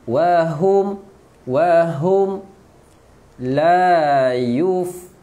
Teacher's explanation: Macam biasa nun ada sabdu, wajib gunnah. Wahum, jelaskan mim sebab mim sukun, rapatkan bibir